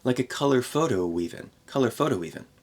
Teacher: we add a little W sound to connect these two vowels